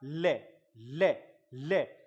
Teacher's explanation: बोल के देखें आप, ले ले ले। जीभ तो ऊपर टच हो रही है, लेकिन बगल में जो गैप बच जाता है वहां से हवा का प्रवाह बाहर की तरफ आता है। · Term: पार्श्विक ध्वनियां